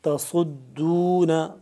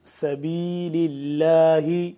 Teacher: صاد موٹا پر کر کے پڑھا جاتا ہے اور سین باریک ہے. سیٹی کے بعد دونوں کی پڑھتے دونوں سختی سے ہیں، لیکن صاد کو موٹا کر کے پڑھتے ہیں ذرا اور سین کو تھوڑا سا باریک کر کے.